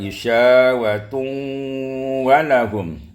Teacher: diidghamkan hanya makhraj saja sementara sifatnya masih ada